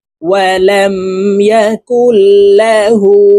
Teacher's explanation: হার উপরে উল্টা পেশ আছে তো এই হাকে আলিফ টেনে পড়বো